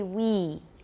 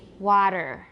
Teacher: For we, your tongue is more, it's higher and more front. It's higher and more front for we. Water, it's more back and low.